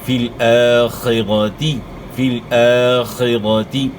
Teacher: خا ایک ہا ہے, ایک خا ہے, اور پھر ایک ہا ہے, ان میں آپ نے فرق کرنا ہے. فی الآخرۃ, را کو آپ نے موٹا ادا کرنا ہے, را کے اوپر زبر ہے